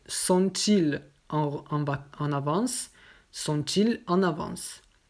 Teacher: on prononce la liaison pour le pronom inversé, mais pas après.